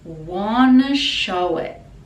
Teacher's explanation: Want to becomes wanna pronunciation, and this is very common in speaking and singing.